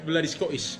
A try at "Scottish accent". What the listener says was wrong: Sound like a Londoner.